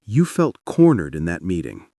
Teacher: Your voice should land down at the end, not up like a quiz. Down means I get it.